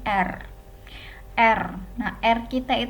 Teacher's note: bunyi yang diiringi oleh geletar ya atau getar dan ini posisinya melibatkan alveolar seperti pada bunyi er Erna RCTI itu adalah er yang bergetar